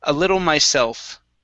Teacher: let's use a flap T here for the double T